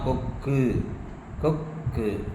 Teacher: இந்த குற்றியல் உகரம்னா என்னன்னாக்க பொதுவா தனக்குரிய ஒரு மாத்திரை அளவிலிருந்து அரை மாத்திரை அளவில் குறைந்து ஒலிக்கும் உகரம் அப்படிங்கறதுதான் குற்றியல் உகரம்னு சொல்றோம். ஒரு மாத்திரையிலிருந்து அரை மாத்திரையா குறுகி ஒலிக்குது.